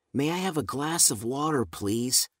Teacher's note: remembering to stress water and to make her voice rise at the end of the question